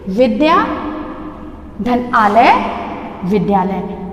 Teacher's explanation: विद्या का आ और आलय का आ दोनों मिले हैं, आ और आ मिला के बन गया है आ, दीर्घ हो गया है।